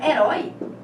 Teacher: o rói continua sendo a sílaba mais forte, mas como agora não tem essa última sílaba, ela passa a ser a última sílaba da palavra, tornando essa palavra uma oxítona e, portanto, exigindo o acento.